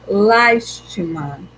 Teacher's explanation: Então, a sílaba mais forte é o las, né? Uma, última, o ti, penúltima, e las, antepenúltima.